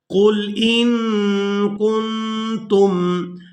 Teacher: قل ان کنتم، یہاں نون ساکن پر اور اس کے بعد اس نون ساکن پر بھی اخفا کیا جائے گا، یعنی دونوں جگہ پر نون کی آواز کو ناک میں چھپا کر ادا کریں گے۔